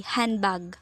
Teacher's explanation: Pag pronounce mo to, maaalis yung D, handbag. The D is not pronounced.